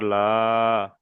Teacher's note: জাবার আলিফ মাদ্দার সমতুল্য, তাই খাড়া জাবারকে এক আলিফ পরিমাণ টান সমতুল্য দিয়ে পড়তে হবে